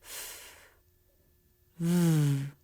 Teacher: the bottom lip lifts and touches the very bottom of the top front teeth